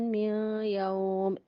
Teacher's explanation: ادغام بالغنہ، نون ساکن کے بعد یا حروف ادغام میں سے آ گیا